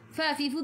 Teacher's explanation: Fa fifu gigi atas menyentuh perut bibir bawah